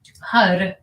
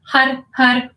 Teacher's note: we take that R up, we hit the tongue in the back of the teeth, right? That little meridian point, right at the roof of the mouth, right behind the teeth, that connects to the glands in the hindbrain.